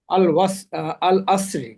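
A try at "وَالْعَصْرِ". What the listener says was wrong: ওয়াল, ওয়াও জবর ওয়া। সূরার নামও আল আসর। ওয়াও হচ্ছে তো এটার আয়াতের অংশ, এটা সূরার নাম না।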